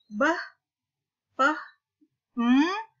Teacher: Bunyi beh, peh, hanya dapat dihasilkan dengan merapatkan bibir, kedua bibir. Ini disebut dengan bilabial, kedua bibirnya rapat.